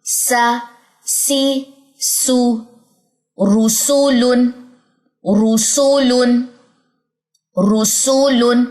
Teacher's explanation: سین باریک ہے، را یہاں پہ موٹا ہے اور سین کی آواز میں باریکی ہونی چاہیے